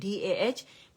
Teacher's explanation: دہ بولیں گے DAH، مد نہیں بنائیں گے، دہ کر کے نہیں پڑھیں گے